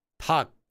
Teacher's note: Most of the time, most of the time, not 100%, but most of the time, whenever you see a double consonant at the bottom, and one of them is this letter, the I'm not going to say L because it's not an L or an R. The L will not be pronounced most of the time.